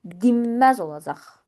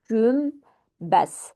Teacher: Lakin özündən sonra M, B və ya M samiti gəldiyi zaman N samiti M-ya keçir